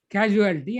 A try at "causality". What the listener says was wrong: Causality is not casualty. Casualty means a death section in hospital. It is causality. Causality.